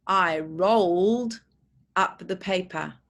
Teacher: R-O-L-D. You can feel the vibration all the way through, so it's a D sound.